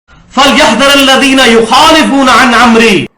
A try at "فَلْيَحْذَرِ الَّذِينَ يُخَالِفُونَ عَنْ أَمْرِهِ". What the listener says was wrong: فَلْيَحْذَرِ الَّذِينَ نہیں قرآن دی آیت ہے فَلْيَحْذَرِ الَّذِينَ رات لے زیر ہے.